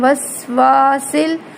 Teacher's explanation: سین میں سٹی کی آواز پیدا کرنی ہے